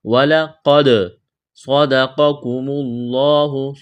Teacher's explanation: صاد کو موٹا کرنا ہے، سیٹی کی آواز پیدا کریں گے · قاف کو موٹا کریں گے، اس قاف کو باریک کرنا ہے، لفظ اللہ کے نام سے پہلے پیش ہے، لفظ اللہ کے نام کو موٹا کرنا ہے · دال ساکن ہے، قلقلہ کریں گے دال پر